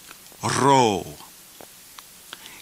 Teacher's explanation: Did you notice on the rho how the R is rolled?